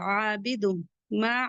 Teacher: तनवीन के बाद मीम आ रहा है। इदगाम माल गुना होगा।